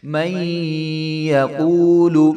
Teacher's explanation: لام کے اوپر صرف پیش ہے تو پیش کو لمبا نہیں کرتے